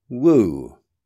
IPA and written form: wuː (woo)